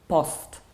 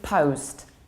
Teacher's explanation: Polish people, who I usually cooperate with, tend to pronounce this word like post because in Polish we tend to say ten post do tamtego posta. In English you need to round it. It's O like globe.